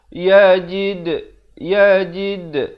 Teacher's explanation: Ada pantulan. Dal, huruf qalqalah.